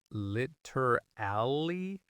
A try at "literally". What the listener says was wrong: Yeah, a lot of people say literally, putting the stress on the wrong syllable. The correct stress is actually on the first syllable, literally. And in fast speech, it becomes literally, 3 syllables.